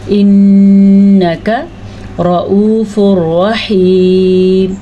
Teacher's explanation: را کو پر پڑھا کیونکہ را کے اوپر زبر ہے